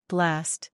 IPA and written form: blæst (Blast)